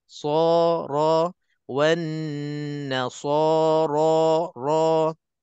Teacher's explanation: Kedudukan mulut kita ke depan, bibir mulut kita ke depan untuk kita tebalkan so, ro, kedua-duanya huruf tafkhim ataupun hukum mufakham, hukum tebal.